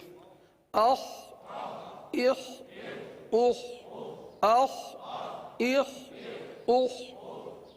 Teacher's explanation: حلق کے اوپر والے حصے سے ادا ہوتا ہے, لہذا خا کو حلق سے ادا کریں گے, اور یہ حرف پر ادا ہوتا ہے, لہذا پر ادا کریں گے.